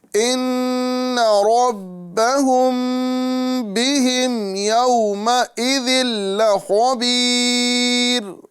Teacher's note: ساتھ ہی ساتھ آگے آپ دیکھ رہے ہیں تنوین ہے، اس کے بعد میں لام آ رہا ہے، تو تنوین کے بعد یا نون ساکن کے بعد جب حروف یرملون میں سے کوئی حرف آتا ہے تو وہاں ادغام ہوتا ہے، لیکن یہاں پر لام چونکہ آ رہا ہے تو ادغام تو ہوگا لیکن بلا غنہ ہوگا، بغیر گنہ کے ہم ادا کریں گے. یعنی یومئذ لخبیر اس طرح ادا کریں گے.